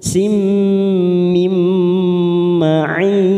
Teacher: Kasroh tanwin pada huruf sin siap masuk pada huruf mim, idgham bi gunnah. Kita tekan 3 ketuk